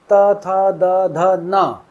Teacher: त वर्ण यानी कि दांत से जहां दांत लगता है। जीभ जहां दांत से जाकर टकराती है। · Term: दांत वाले वर्ण